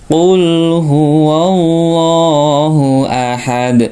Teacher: dalnya dipantulkan atau disukunkan menjadi Qalqalah Kubro · dibaca lamnya dibaca tebal atau lafat lam jalalah ini lafat Allah dibaca tebal.